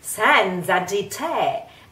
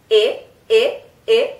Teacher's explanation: In this case, te has the closed e, e, e, e, we say it e, and di te.